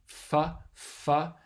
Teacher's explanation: You're making a narrow constriction with your lower lip and your upper teeth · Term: labiodental fricative